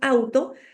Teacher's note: cuando nosotros decimos auto juntamos estos dos sonidos de la a y la u en un solo golpe